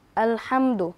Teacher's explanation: হা মিম জবর হাম আল হাম দাল পেশ দু আমরা শিখেছিলাম মিম সাকিনে ইজহার অর্থাৎ গুন্না ছাড়া তাড়াতাড়ি পড়তে হয়